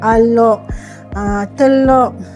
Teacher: Kemudian jika kalau kita lihat sebelah dialek utara standard, dialek utara, dia sebut R tu ditukar menjadi Q